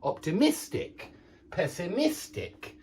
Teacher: the adjective optimistic does have the stress on the mist.